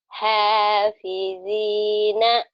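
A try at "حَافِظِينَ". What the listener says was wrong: Suaranya kayak he he jangan digituin ya. Dibuletin. Happy jangan. Dibuletin.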